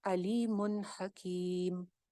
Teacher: علیم کے اوپر ہم کوئی غنہ نہیں کر سکتے کیونکہ آگے ہا آ رہی ہے حروف حلقی میں سے، تو یہاں پہ اظہار ہو جائے گا علیم حکیم.